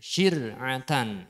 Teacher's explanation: Yudhiru ad'afan ridwanahu mudghatin arbaban syir'atan turja'una Nah, kalau yang syir niki rohnya dibaca tarqiq ya. Jadi dibaca biasa, tidak memoncongkan bibir. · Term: ro tarqiq